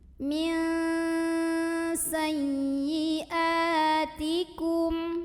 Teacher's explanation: hamzah berbaris fathah ketemu dengan alif. Maka ini dipanjangkan 2 harokat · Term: mad syabih bil badal